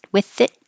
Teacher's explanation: hold that last T so that you don't hear the T at the end